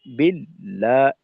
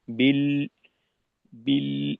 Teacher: তো এখানে বিল্লাহ, এখানে যেটা মূল কথা ছিল, বিল্লাহ, এইভাবে যদি কেউ ধাক্কা দিয়ে পড়ে, বিল্লাহ, এই লামে আমি ধাক্কা দিলাম, লাম এতটা ধাক্কা পাবে না। এটা লাম হলো তাওয়াসুতের হরফ। এখানে মধ্যম মানের ধাক্কা দিতে হবে, আর আওয়াজকে রিখোয়ার মতো চালু রাখতে হবে, অর্থাৎ বিল বিল এভাবে আওয়াজকে ধরে রাখতে হবে, আওয়াজকে মাখরাজে আটকাইয়ে দেওয়া যাবে না।